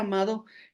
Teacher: en Venezuela el sonido se pronunciaría como una fricativa dental sonora entre las vocales a y o, resultando una pronunciación más cercana a amaba.